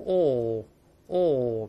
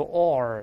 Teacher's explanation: 但英国人直接读成▁ore，▁美音读▁ore，▁加个儿化韵